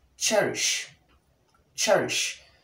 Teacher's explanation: It is called palato-alveolar sound simply because when you pronounce the sound ch, the tip of the tongue is in contact with the alveolar ridge, and at the same time, the top of the tongue is also in contact with the hard palate or the roof of the mouth concurrently.